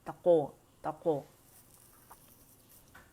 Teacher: क़ाफ़ का कलकला मोटा है, तक़ो, तक़ो।